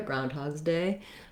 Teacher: then my letter s says the z sound groundhogs groundhog's day i tend to run those together groundhog's day not a lot of a break in between